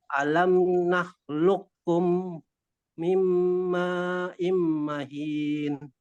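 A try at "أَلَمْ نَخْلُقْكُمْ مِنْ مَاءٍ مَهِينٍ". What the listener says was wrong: Ya, situ masuk ke kaf tasdid. Ya, alam nakhluqkum.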